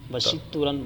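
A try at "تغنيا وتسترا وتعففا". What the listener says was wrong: وسترن نہیں آپ دیکھ رہے ہیں نا نیچے لکھا ہوا ہوگا تسترن سترا نہیں پڑھ لیں جس نے باندھا اس کو غنا حاصل کرنے کے لیے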